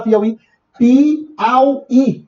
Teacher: Piauí duas palavras de concurso o acento continua porque será porque não é paroxítona é uma oxítona sílaba tônica é a última